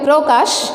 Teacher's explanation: পয়ে র ফলার জন্য এখানে আদ্য পরিবর্তন হয়ে ওকার হয়ে গেছে